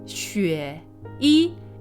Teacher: It's the third tone and then the first tone. But similarly to the earlier note I made about the tonal combinations making it sound a little different, no one actually says xueyi, right?